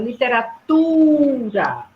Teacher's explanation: eu sei que ela é a penúltima então eu digo assim a sílaba tônica da palavra literatura é a penúltima sílaba